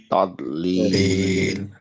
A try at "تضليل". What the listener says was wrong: very good মাশাআল্লাহ